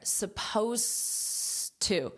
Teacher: you do not hear this Ed at all it ends on an S sound